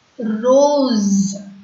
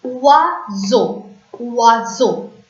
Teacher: When S comes between the two vowel sounds, S becomes Z.